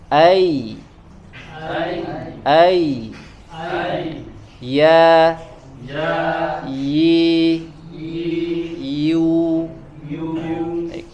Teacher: ketika kita membaca huruf ya di makhrajnya ya, maka sama seperti kita membaca kasroh ya, akhirnya bagian tengah lidah kita mengangkat ke atas.